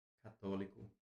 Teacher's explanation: As proparoxítonas, elas possuem a antepenúltima. Antepenúltima sílaba tônica.